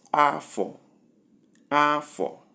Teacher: A day in the Igbo weekday, Afo, as indicated by the arrow. Number 3, we have high and flat, and the sound is Afo, Afo, a year.